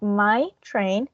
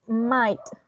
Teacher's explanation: we have the juncture after my. So we have my train. And in this case, we have might. The juncture is after the T. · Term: open juncture